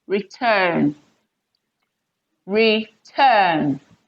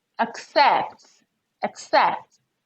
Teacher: so here we have return second syllable stressed okay accept second syllable stressed